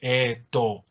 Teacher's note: Parece que todo se hubiera vuelto oscuro, con vocales oscuras al final.